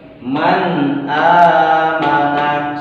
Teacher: Membacakan huruf nun yang berbaris sukun ini dengan jelas dan tidak berdengung. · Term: izhar